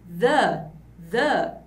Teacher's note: o som de z, que é com z, botando a língua pra fora eu tenho the